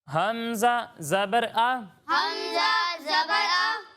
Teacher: جب ہم ہا اور حمزہ کی ادائیگی کریں گے تو ان دونوں کو حلق کے نیچے والے حصے سے ادا کرتے ہیں، حلق کے نیچے والے حصے سے پڑھتے ہیں۔